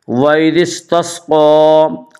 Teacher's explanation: قاف کے اوپر کھڑا زبر ہے، کھڑا زبر کو ایک الف کے برابر کھینچ کر پڑھیں گے۔